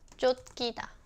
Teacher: when 치읓 is used as a final consonant, you also pronounce this as 디귿